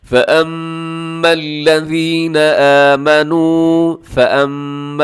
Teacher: میم مشدد ہے، آپ نے غنہ کرنا ہے